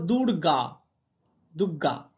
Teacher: র টা গয় পরিণত হচ্ছে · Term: পরাগত সমীভবন